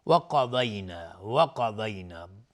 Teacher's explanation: قاف و ضاد هر دو از حروف استعلا هستن، غلیظ تلفظ میشن